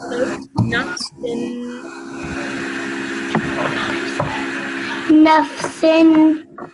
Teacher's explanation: tanween, you have to produce that nasal sound at the end.